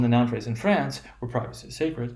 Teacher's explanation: you're gonna have a sort of a dip in your voice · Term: non restrictive